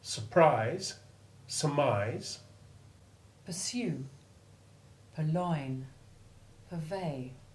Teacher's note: the R is almost or wholly silent when following short U in unstressed prefixes